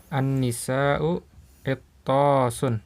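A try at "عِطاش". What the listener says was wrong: Bukan itosun, enggak ada tasdidnya. Itosun, itosun. Iya, ya, lihat di jiaun kan enggak ada tasdidnya ya. Sama enggak ada tasdidnya. Itosun. An-nisa'u itosun.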